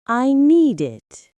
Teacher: The d sound from need links to it. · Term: linking sounds